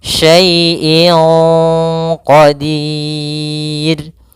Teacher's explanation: kita boleh memanjangkan dua harakat boleh pula empat harakat boleh pula enam · Maka menyamarkannya langsung ke huruf qaf, bukan syai'in qa. Jangan pakai eng, tapi dia langsung disamarkan ke huruf qafnya. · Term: Mad arid lisukun, ikhfa